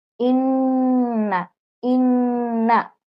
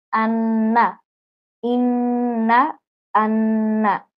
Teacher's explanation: ইন্না, 3 আলিফ পরিমাণ গুন্না ধরে রাখতে হবে।